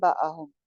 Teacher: جیسے فرسٹ پہ ہے باہم، نون کے بعد با آ گیا تھا، نون کی آواز میم میں چینج ہو گئی ہے. غنہ ہو جائے گا ایک الف کے برابر. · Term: اقلاب